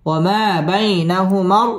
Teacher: জবরের বাম পাশে জজম ওয়ালা ইয়া লিনের হরফ তাড়াতাড়ি পড়তে হবে